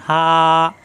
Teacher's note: মুখ খোলা থাকবে কন্ঠনালী শুরু থেকে উচ্চারণ